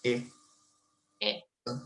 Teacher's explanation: But you don't want to have the diphthong J glide in IPA at the end.